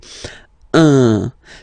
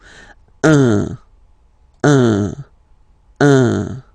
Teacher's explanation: it's what we call the nasal, so it goes in your nose, okay? Un. So if you listen to me, you don't hear any N